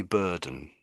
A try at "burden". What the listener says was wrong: so the first bit is bur b. You're saying bear. It's more